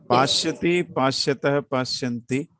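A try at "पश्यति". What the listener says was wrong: It is not shakara, it is the sakara. Pasyati, pasyatah.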